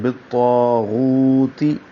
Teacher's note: طا کو موٹا پڑھیں گے، غین کو بھی موٹا پڑھیں گے، واو مدہ ہے، طا الف مدہ ہے، غو واو مدہ ہے، بالطاغوت، دونوں کو دو دو حرکات لمبا کرنا ہے۔